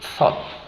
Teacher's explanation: Con la lengua entre los dientes hacemos un sonido sordo. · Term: sonido TH